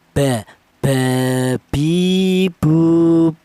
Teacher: itu dua bibir, baik bibir atas atau bibir bawah rapat dulu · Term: huruf ba